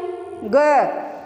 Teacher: अब इसका उच्चारण करते हैं ग, ग का जब हम उच्चारण करते हैं तो जो है घोष में क्या था, घोष अघोष में कि ये घोष था, स्वर तंत्रियाँ झंकृत हो रही थी, लेकिन यहाँ क्या हो रहा है, अगर प्राण की बात करें, वायु की बात करें, तो वायु जो है निकलती ही नहीं है।